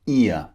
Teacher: ear is two vowels pushed together we call this a diphthong two vowels squeeze together like we've seen before ear it starts with the mouth wide